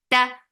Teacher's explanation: The sound is short. Ta very sharp sound. No flow of sound is there for fatha upon jaws, and the sound is short.